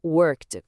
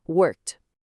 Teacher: o sufixo ed é pronunciado como um T, portanto, a pronúncia correta é um som oclusivo único